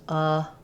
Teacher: So my tongue is resting in the bottom of my jaw, but my mouth is not very open. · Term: schwa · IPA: ə